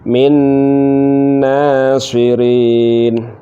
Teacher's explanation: nun mati bertemu nun, maka diidghamkan dengan cara mendengung